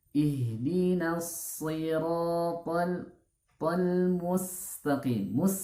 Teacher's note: pengucapan huruf sin, hati-hati jangan jangan terkesan tebal, ya